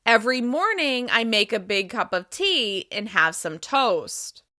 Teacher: When we fall at the end, we hit our lowest pitch, one step below the baseline.